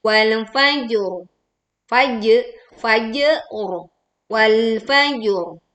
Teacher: Jangan lupa ro sukun karena wakof. Karena di sini sebelumnya ada huruf bertanda sukun dan didahului huruf bertanda fathah, maka ro sukun dibaca tebal. · lam sukun tetap ditekan, kemudian di sini pantulkan jim sukunnya, lalu ro dibaca tebal saat dibaca wakof.